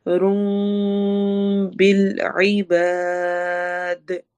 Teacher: رم بالعباد، بس ہوئی رم میں اقلاب ہو رہا ہے، تنوین کے بعد با آ رہا ہے، اس لیے ہم نون کے ساؤنڈ کو میم میں چینج کر دیں گے، اور بالعباد، عین حروف حلقی میں سے ہے، با دال پہ قلقلہ ہوگا۔